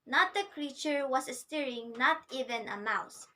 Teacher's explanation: the first two syllables are unstressed and it is followed by the stressed syllable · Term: anapaz